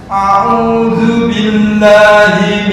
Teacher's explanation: Ain, ain tuh di tengah tenggorokan